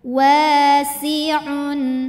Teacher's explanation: Sinnya ini tipis ya, S, S desis biasa.